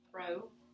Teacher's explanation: Remember that M's a nasal sound, so it's going to distort that vowel a little bit.